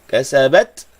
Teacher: ta sukun, ada angin sikit